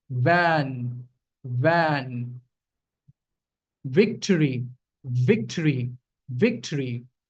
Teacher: the wet part of my lower lip and it's going to come in contact with my upper teeth